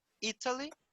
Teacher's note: a sílaba tônica é no I